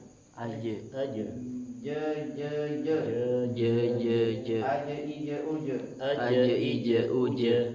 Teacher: Jaga sifat syiddahnya dan sifat jahar, terutama di jim. Jim kan punya sifat jahar dan syiddah.